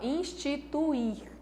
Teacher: aqui não tem como eu negar que U e I formam um hiato